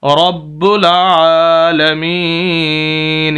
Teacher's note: رب العالمین، الف ہے خالی ہے، لام ساکن ہے، اس وجہ سے با کو لام کے ساتھ عین کے اوپر کھڑی زبر، عین کو لمبا کریں گے